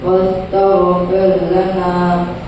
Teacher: را سکینہ سے پہلے زیر ہے اس لیے را سکینہ کو باریک کر کے پڑھیں گے